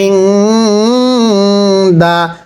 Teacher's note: এই যে নুন সাকিনটা গুন্নাহ করে পড়তে হবে